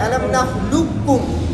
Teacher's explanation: تو اس کے اندر جب ادغام ہوا ہے تو اس کے اندر ادغام تام بھی ہے، ادغام ناقص بھی ہے. لیکن ادغام تام اس کے اندر اولا ہے، یعنی قاف بالکل نہیں پڑھنا، اولا ہے. علم نخلقکم اس طرح پڑھنا اولا ہے.